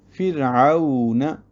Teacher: فرعون میں بھی را باریک ہے، را ساکن سے پہلے فا ہے، جبکہ اس کے بعد حروف مستعلیہ میں سے کوئی حرف نہیں ہے۔